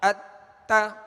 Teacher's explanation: تا کی زبر جب ادا کریں گے آواز اور منہ کھولیں گے اور اس کو کھینچیں گے بھی نہیں